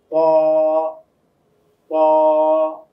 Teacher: জিহ্বার আগাটা উপরের তালুর সঙ্গে গিয়ে লাগবে, আওয়াজটা মোটা হবে